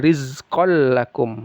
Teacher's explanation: tanwin bertemu lam idgham bila ghunah dimasukkan tapi tidak dengung